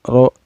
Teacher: Ro-nya ini dihukumi tafkhim atau tebal karena ro di sini berbaris patah ya.